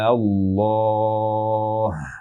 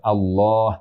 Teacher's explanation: Jadi bukan Allah, tapi A-nya dipanjangkan. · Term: mad lazim